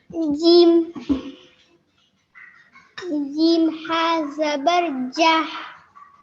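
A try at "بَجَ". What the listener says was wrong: अरे भाई हा कहाँ पर है?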